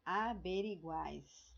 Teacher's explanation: Então, você vai ter três vogais na mesma sílaba. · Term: Triptongo